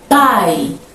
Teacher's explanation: Em pai, o I é uma semivogal, porque ele não é tônico.